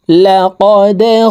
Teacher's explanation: দাল কলকলার হরফ নিচের দিকে ধাবিত করে ধাক্কা দিয়ে উচ্চারণ করতে হবে।